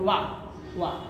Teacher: वा के उच्चारण में दोनों होठों का आकार गोला हो जाता है